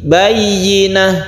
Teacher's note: Bayyinah, yi-nya itu sering hilang. Orang membaca biasanya bayyinah, tapi yi harus jelas i.